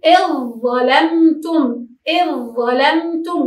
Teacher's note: نقول إذ ظلمتم، إذ ظلمتم، وكأنه لا وجود للذال